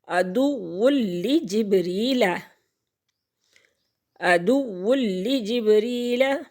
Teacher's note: جیسے یہاں پر ہو رہا ہے، نون تنوین کے بعد لام آ گیا حروف یرملون میں سے، تو یہاں پہ ادغام ہوگا لیکن غنہ نہیں ہوگا، بلا غنہ ادغام کریں گے۔